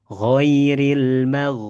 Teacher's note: in oke ginnya kurang tebal ghairil magh ya huruf ghin di sini tebal jadi tidak boleh dibaca magdubi